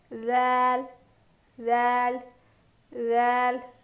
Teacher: ज़ाल ज़ुबान है ना, हमारी ज़ुबान की नोक को सामने के जो दो दांत है उसके एडजस पे यानी किनारे पे लगा के पढ़ने से ऐसी आवाज़ आती है।